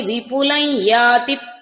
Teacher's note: విపులం ఇక్కడ ఉన్న అనుస్వరం యకారం అవుతుందండి